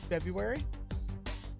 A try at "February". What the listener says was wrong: There's 2 R's in February, not February. It can be, but it's not. But it's not.